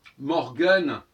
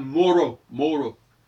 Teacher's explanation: Morgen en allemand, le G disparaît, la dentale disparaît, ça devient Moro